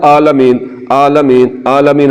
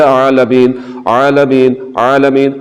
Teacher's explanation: حلق کے درمیان والے حصے سے آواز کو نکالنا ہے جو کہ عین کی آواز ہے